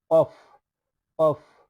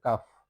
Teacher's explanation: হলকের মধ্যকার থেকে কফ আর কাফ কাফ হলকের শুরু থেকে